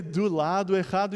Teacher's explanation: It's the final syllable being unstressed, and the O's become U.